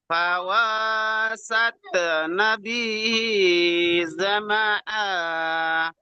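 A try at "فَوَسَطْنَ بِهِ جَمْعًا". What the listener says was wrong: এখানে যদি দেখেন ফাওয়া সাতা নাই, এখানে ত আছে। ফাওয়া সাত, এইভাবে সাতা বলে তার উচ্চারণ হয়ে যাচ্ছে।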